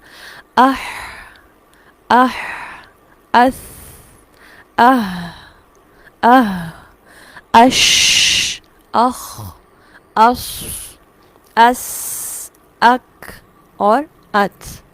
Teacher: یہ ہے آواز میں سانس کا جاری ہونا، اسے کہا جاتا ہے صفت ہمس